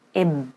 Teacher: Notice how I'm not pronouncing any short or long vowel after the ba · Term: Sukun